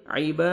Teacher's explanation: आइबा अलिफ मद्दा कि कायम मकाम है, बा को फतहा अलिफ सगीरा 1 सेकंड खींचना है।